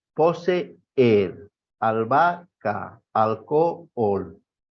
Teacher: Son vocales iguales que conforman un hiato.